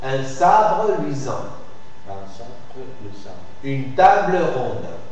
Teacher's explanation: Si tu remarques là, sabre luisant, le E de sabre va précéder d'un groupe liquide, BR, et va suivi après d'une consonne articulée